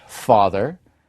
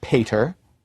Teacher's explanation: voiceless stops become voiceless fricatives in Germanic languages but remain voiceless stops in Romance languages